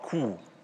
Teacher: K, U, langes U, langes gespanntes U. Das fängt an mit einem Plosiv. Da haben wir minimale Sonorität, also maximalen Verschluss. Und dann steigt die Sonorität an zum Vokal, der ist maximal sonor. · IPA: k u: